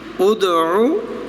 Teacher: ادعو ادعو، پہلا حمزہ ہے، دال مقلقل اور عین کی آواز نکلے. ادعو عین وسط حلق سے، وسط حلق سے یہ آواز نکلے گی